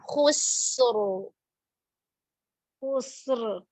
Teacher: دونوں جگہ پہ را کو پر پڑھیں گے کیونکہ را ساکن، ماقبل ساکن، ماقبل ضمہ آ رہا ہے.